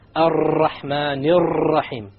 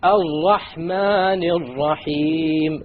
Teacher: You cannot allow the tongue to roll. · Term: No rolling